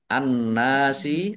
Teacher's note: An-nasi alif lam samsiyah karena tidak dibaca langsung masuk ke huruf berikutnya yaitu nun ditandai nunnya ada tasdidnya. Nun tasdid dibaca gunah atau mendengung ditahan biar tampak dengungannya. Nun fathah alif mat tobi'i panjang dua harokat.